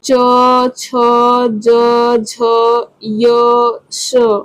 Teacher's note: जीभ जो है हमारे तालु में स्पर्श करती है।